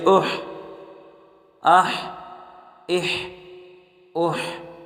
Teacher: حمزہ حا زبر اح، اح، اس کو ہا نہیں پڑھنا، سینے سے نہیں نکلتا، یہ ہا گلے سے نکلتا ہے، اس کو گلے سے نکالنا ہے